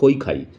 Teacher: ইটা এখানে স্পষ্ট উচ্চারণ হচ্ছে না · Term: অর্ধস্বরধনি